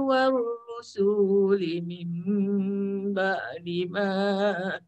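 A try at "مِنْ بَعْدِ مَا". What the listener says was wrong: ba' tu tekankan, jangan letak ba' aje nanti jadi hamzah. Min ba'di ma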